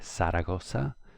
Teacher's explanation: In the south of Spain, you will hear people sometimes say Zaragoza, where the Z is pronounced like an S